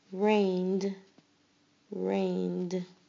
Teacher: You only hear the d sound at the end.